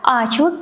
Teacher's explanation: yumshoq G harfi umuman talaffuz qilinmaydi. Unlilar biroz cho'zilib talaffuz qilinadi.